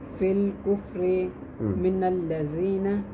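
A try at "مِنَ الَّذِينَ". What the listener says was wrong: من الذین ذال کو نرم پڑھیں گے بیٹا ٹھیک ہے. الذین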